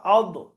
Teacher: জিহ্বার কিনারা যদি মাড়ির দাঁতের গোড়ায় লাগে, উপরের মাড়ির দাঁতের যদি গোড়ায় লাগে, তাহলে দদ উচ্চারণ হবে। · তাহলে আপনার জিহ্বার কিনারাটা, জিহ্বার কিনারা লেখা আছে, জিভের কিনারা তার বরাবর উপরের মাড়ির দাঁতের গোড়ার সাথে লাগিয়ে উচ্চারিত হয়।